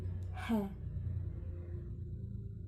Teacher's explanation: The place of articulation is glottal. The manner of articulation is fricative. H sound include voiceless.